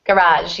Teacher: the stress falls on the second syllable in that one because we borrowed that word directly from French